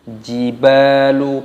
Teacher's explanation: ba-nya dibaca panjang, ada tanda alif mad tabi'i dipanjangkan 2 ketukan